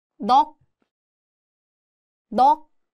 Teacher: the 시옷 sound disappears and it just sounds like 윽, a light, almost muted k sound. The sound is made at the back of the mouth with the back of the tongue gently contacting the upper palate, like 윽. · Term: 받침 기억시옷